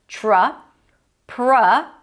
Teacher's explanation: the tr together turns into a ch sound